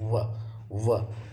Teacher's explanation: यानी हमारे ओठ दांत को स्पर्श करते हैं तब इसको हम बोल पाएंगे। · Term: दंत ओष्ठ